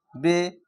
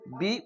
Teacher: জেরকে মারুফ বা রিসি কার পড়তে হবে মাজহুল বা এ কার দেখেন এককার পড়া নিষেধ কখনোই বা জের বে এরকম না হয় বা জের বি উচ্চারণ